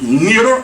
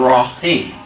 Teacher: So when we have two sun letters together, we wastle the first sun letter, or make it silent, and double the second one. So the lam is silenced, and the ra is double.